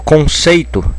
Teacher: Quando eu falo conceito, a tonicidade está no sei, né? Eu falo conceito, eu sei que tem a tonicidade.